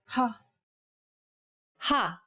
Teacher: saying this sound involves a forceful expulsion of air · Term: aspirated